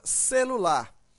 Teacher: observa que a sílaba mais forte desta palavra é a sílaba lar